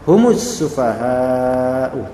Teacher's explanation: Tetapi karena iltiqa as-sakinain dan juga langsung bertemu dengan alif lam syamsiyah, maka lafal mim yang tadinya harus sukun kemudian diganti menjadi berdhammah karena sebelumnya dhammah juga